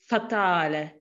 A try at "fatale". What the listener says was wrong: Yeah, you have to imagine that the F and the T are going in the same direction. I hear ft with like a backwards motion instead of ft. Fatale.